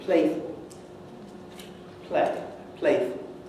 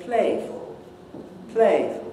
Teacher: the play in playful is shorter than the one in play on its own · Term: rhythmic clipping